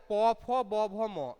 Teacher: জিভ যাচ্ছে না, এখানে দুটো ঠোঁট এক জায়গায় হয়ে যাচ্ছে। তাহলে উপর এবং নিচের ঠোঁট এক জায়গায় হয়ে উচ্চারিত হচ্ছে বলে এটার নাম হয়ে যাচ্ছে ওষ্ঠ বর্ণ